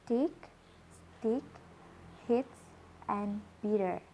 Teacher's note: in tick, we normally find an aspirated T, and in stick and hits, we find an unaspirated T. Then in bitter, we find flap T. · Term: allophones